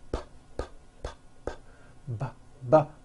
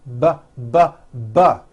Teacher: They are produced exactly the same way here in your mouth. But the P sound has no voicing and the B sound BBB does have voicing. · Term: paired consonants